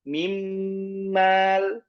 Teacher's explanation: Idgham kamil, yaitu nun sakinah itu sempurna masuk kepada huruf mimnya tanpa menyisahkan makhraj dari nun ataupun sifat dari nun. Karena ini sama-sama gunah juga ya.